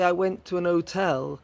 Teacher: But if you're speaking very quickly, if you're speaking colloquially, if you're speaking a little slang, you might say, I went to an hotel, because you haven't pronounced the H, so the an can slip in.